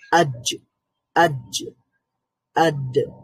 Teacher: সেখানে আওয়াজ পুরোপুরি থেমে যাচ্ছে, কিন্তু কলকলা হওয়ার কারণে আবার আওয়াজটা রিপিট হচ্ছে। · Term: কলকলার হরফ